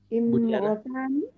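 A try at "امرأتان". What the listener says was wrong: Aywa, imro'a, imro'atani. Itu hamsanya ada tulisannya ya. A, ya, imro'atani.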